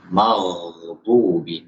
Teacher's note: Jadi ketika mengucapkan ghain, khususnya ketika sukun, kita buat suaranya itu mengalir.